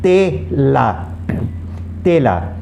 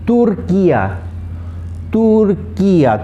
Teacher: The Spanish T again has a very soft sound like the Spanish D. It doesn't have a strong sound like the English T.